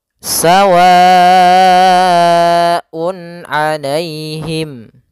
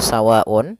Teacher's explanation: kita harus panjangkan sepanjang 4 harokat apabila kita bertemu mad ketemu dengan hamzah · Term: mad wajib muttasil